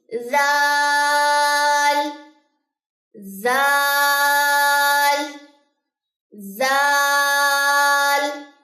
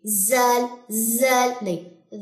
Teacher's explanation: بہت نرم ادا کرنا، اس کو کبھی بھی اس میں سیٹی کی آواز نہیں آنی چاہیے، زال زال نہیں، ذا ذا۔